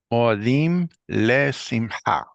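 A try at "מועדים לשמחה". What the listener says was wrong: All right, now let's try to make a bigger separation between these two vowels. Mo'a. And if you don't do an ayin, at least just break it. Mo'a. Mo'adim. Instead of mo'a.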